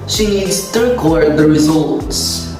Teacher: we use the word as a verb in the sentence meaning the primary stress is in the second syllable